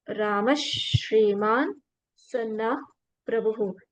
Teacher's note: when this another Shakara of Shankara follows, then after Visarga, the Visarga we will pronounce as Shankara Sha. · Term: half Sha